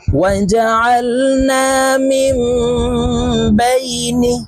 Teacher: وجعلنا من بين، واو زبر و، جيم زبر جا، وجع، عين لام زبر عل، وجعل، نون ألف زبر نا، وجعلنا، মিম মিম জের মিম গুন্নাহ করতে হবে, কারণ নুন সাকিনের পরে ইখলাবের হরফ বা আসছে, তাই এই মিম দ্বারা পরিবর্তন করিয়া গুন্নার সহিত পড়ব